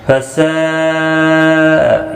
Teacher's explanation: یہاں پر بھی مد متصل ہے، 4 الف کی مقدار کے برابر کھینچ کر پڑھیں گے۔